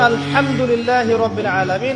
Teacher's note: হা এর মাখরাজ কোথায় কন্ঠনালীর মাঝখান থেকে